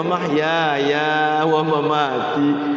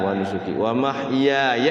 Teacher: yanya pendek itu satu ketukan karena ada yang dibaca panjang juga